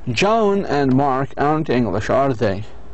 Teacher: our voices goes down on the tag if we already know the answers and are making small talk